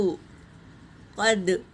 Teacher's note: قاف پر حرکت ہے، دال پر سکون ہے، یہ قلقلہ کا قاعدہ ہے، پڑھتے وقت آواز ٹکرائے گی